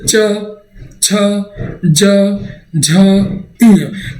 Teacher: हमारी जो जिह्वा होती है ना, वो तालु को चिपक करके इन वर्णों का उच्चारण करती है